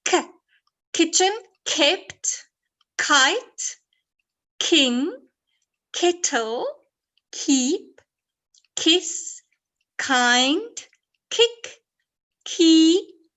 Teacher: So you got the ch sound in the middle, but it starts the k, kitchen. And you say the k sound at the back of your throat